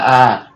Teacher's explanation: বিবৃত ধ্বনি মানে মুখটা সবচেয়ে বেশি খোলা আ মানে সবচেয়ে বেশি হা হয়ে যায় মুখটা তারপরে তার একটু